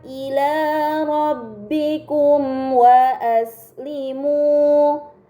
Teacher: terdapat mim sukun bertemu dengan huruf wau ini dinamakan izhar syafawi karena mim sukun bertemu dengan huruf selain ba dan mim maka mim sukun dibaca secara jelas